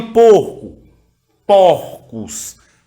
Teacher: quando eu tenho um O fechado, que eu coloco ele no plural, eu terei aí uma metafonia